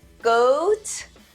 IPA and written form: ɡoʊt (goat)